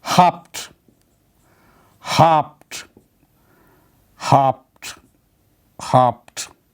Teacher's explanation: There is no vowel in between B and T.